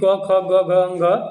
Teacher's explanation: क का उच्चारण स्थान कंठ होता है